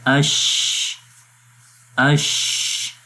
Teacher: جب ہم شین پڑھتے ہیں تو شین کی آواز منہ کے اندر پھیل جاتی ہے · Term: تفشی